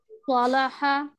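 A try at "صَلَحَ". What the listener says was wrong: लाम मोटा हो रहा है, लाम बारीक रहे। صالح، صالح، صالح।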